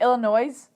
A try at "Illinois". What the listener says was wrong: No, Illinois. You don't pronounce the S at the end.